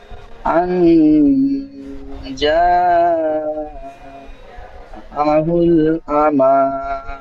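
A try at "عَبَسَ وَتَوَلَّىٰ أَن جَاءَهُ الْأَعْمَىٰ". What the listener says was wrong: আমা হয়ে যাচ্ছে আ আমা। আ হামজা আইন যাব।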